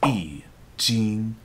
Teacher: when followed by any other tone other than the fourth tone e is pronounced as the fourth tone itself